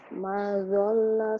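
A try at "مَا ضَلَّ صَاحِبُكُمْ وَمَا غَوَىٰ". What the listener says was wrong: Maknya panjang.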